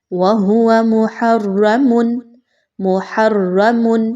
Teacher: یہاں پر جو حرکت ہے وہ حرف کے اوپر ہے، را کے اوپر ہے، اس وجہ سے اس را کو پر پڑھا جائے گا